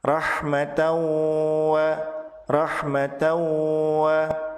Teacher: tanwin pada kata rohmatan berubah menjadi rohmataw karena dilebur ke huruf Waw setelahnya ditahan dua harokat disertai dengan guna hukum bacaan ini disebut sebagai Idgham Bighunnah Rohmat towua Rohmat dawua